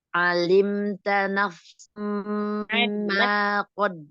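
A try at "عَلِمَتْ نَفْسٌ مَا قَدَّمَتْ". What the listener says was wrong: Alimat, bukan alimta.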